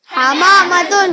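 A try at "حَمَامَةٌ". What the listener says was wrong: دیکھ کے دیکھیے, وہ حما جو ہا ہے نا, حلوہ والا ہا ہے, ہاتھی والا ہا نہیں ہے.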